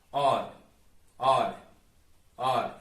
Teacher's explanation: the voiced R is pronounced by your tongue just touching, barely touching the top of your mouth